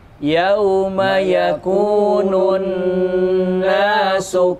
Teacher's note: Ingat, nun bertasydid, ditahan 3 ketukan.